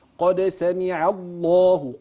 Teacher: كل الفاظ الجلاله التي معي هنا قبلها مفتوح كانها تؤكد على تفخيم حرف اللام في لام لفظ الجلاله